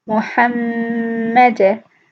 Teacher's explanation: The first meme has a very slight Ghunnah. The second meme has a very prominent Ghunnah.